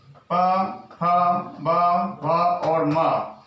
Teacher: ये ओष्ठ वर्ण कहलाते हैं, क्योंकि ये दोनों ओठों के स्पर्श करने पर इनका उच्चारण होता है